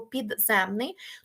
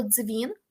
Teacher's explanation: тут в нас повноцінний д і повноцінний з бо д належить до префікса а з належить до кореня якщо ми маємо слово дзвін то тут ми вже не маємо повноцінного Д чи повноцінного з ми маємо африкат